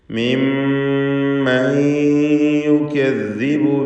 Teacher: ഇദ്ഗാം ബിഗുന്ന നാഖിസ് നൽകി യായിലേക്ക് നൂനിനെ ലയിപ്പിച്ച് മണിക്കുക